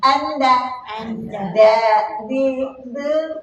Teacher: Keluarnya dari hujung lidah, pangkal gigi hadapan. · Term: nota'iyah